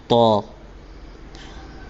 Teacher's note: طا زبان کی نوک اور سامنے کے اوپر کے 2 دانتوں کی جڑ سے ادا ہوتا ہے۔